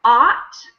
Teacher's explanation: In American English, it's ought. So it's not a diphthong like the word out. We have ow, but this is not like that.